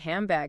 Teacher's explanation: Your mouth is already getting ready to close the lips for the B while you're still making that nasal sound. So the nasal sound shifts from the N position, tongue behind teeth, to the M position, lips closed to match the upcoming B. So it literally sounds like handbag sometimes. · The N sound often changes to an M sound right before the B in bag.